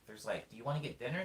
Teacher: There's like a vocal up, an upswing.